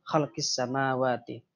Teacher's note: Alif lam huruf sin. Jadi khalqis samawati dilangsungkan. Jadi alif lamnya hilang, langsung ke sin. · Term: idgham samsiyah